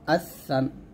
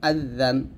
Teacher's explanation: জিহ্বার আগা উপরে দাঁতের আগার সঙ্গে লাগিয়ে উচ্চারণ করতে হবে। হামজা সা জবর আস, সা আলিফ দুই জবর সান, আসান।